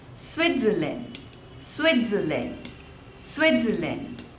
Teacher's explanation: so there are three syllables and the stress is on the first one